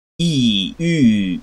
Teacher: These are the closed front unrounded and rounded vowels.